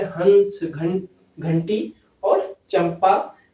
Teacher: किसी वर्णों के उच्चारण में ध्वनि नाक से ज्यादा निकलती है, किसकी अपेक्षा, मुख की अपेक्षा। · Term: अनुस्वार